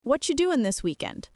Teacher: whatcha is the fast way of saying, what are you?